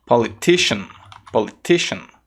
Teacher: não é sian e sim shan